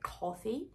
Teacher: the lips they're not very active you don't have to round them very much